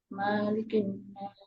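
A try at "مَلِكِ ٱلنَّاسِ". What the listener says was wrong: Ma-nya nggak panjang. Ma-nya kepanjangan, nggak panjang itu.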